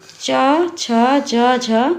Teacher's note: सही जवाब है ऑप्शन ए जंजनों के उच्चारण में स्पर्श का समय ज्यादा होता है और उच्चारण के बाद वाला भाग संघर्षी हो जाता है उन्हें स्पर्श संघर्षी व्यंजन कहते हैं। हिंदी वर्णमाला में च, छ, ज, झ, ये चार व्यंजन स्पर्श संघर्षी व्यंजन है।